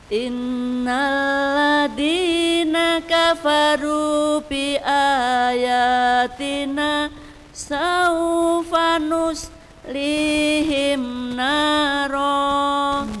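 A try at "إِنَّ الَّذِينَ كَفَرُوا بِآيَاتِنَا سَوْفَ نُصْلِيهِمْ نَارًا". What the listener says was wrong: Ya, bagus.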